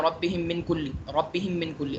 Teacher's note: میم ساکن کے بعد میم آئے تو میم ساکن کو بعد والے میم میں ملا کر غنے کے ساتھ پڑھتے ہیں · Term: ادغام شفوی